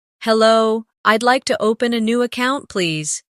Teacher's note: Notice the stress on open and account so the purpose is clear.